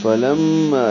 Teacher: لام کو میم سے ملاتے ہوئے غنہ کریں گے، آواز ناک کے بعد سے ملے جائیں گے.